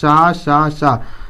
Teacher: यह अघोष भी है और यह महाप्राण भी है